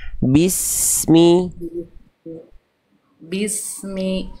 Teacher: ketika melafalkan es sampai melafalkan huruf berikutnya setelah sin sukun itu ngalir ngalir terus nafasnya, suaranya, desisannya.